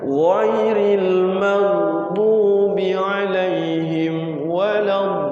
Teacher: Ghain itu tidak boleh ada anginnya. Ghairil enggak ada anginnya.